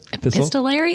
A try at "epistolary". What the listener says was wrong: You're putting an extra syllable in there.